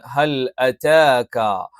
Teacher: ക എന്ന് പറയുമ്പോൾ നാവിന്റെ ആരംഭം അതിൻറെ മേലെ അണ്ണാക്കിന്റെ മൃദുലമായ ഭാഗത്ത് വെച്ചുകൊണ്ടാണ്